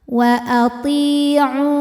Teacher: Sebab ada ya sukun didahului harokat kasrah. Cara bacanya huruf to panjang 2 harokat. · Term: mad tabi'i dhahiri